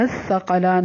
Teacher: سا کو نرمی سے، قاف کو پر پڑھنا ہے، اور لام کھڑی زبر لا ہے، لام کو تھوڑا سا لمبا کریں گے.